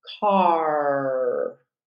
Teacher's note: jaw for that rodic R sound so with the a r we're going to hear an open vowel sound and then a closure into the rodic R so let's practice that the first one